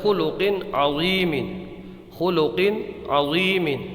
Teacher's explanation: یہ لفظ ہے خلق عظیم، خلق عظیم، تو یہاں پر توجہ کیجئے، یہ دیکھیے تنوین ہے اور اس کے بعد میں یہ عین ہے، عین، تنوین کے بعد میں عین آیا ہے حلقی کا، تو یہاں پر اظہار ہوگا یعنی غنہ نہیں کریں گے، یہاں پر غنہ نہیں کریں گے۔